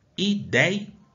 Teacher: Percebam que aqui eu tenho o E e o I, que tem um som aberto. Ideia é um ditongo, porque tem duas vogais juntas aqui. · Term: ditongo aberto